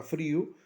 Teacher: En el caso de frío, la palabra frío, I es una vocal débil, pero al estar acentuada se convierte en fuerte y se separa. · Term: hiato